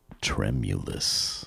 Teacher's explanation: The reason why that is considered a great word is there's 3 or more syllables, stress on the first syllable, and includes an M sound and an I sound.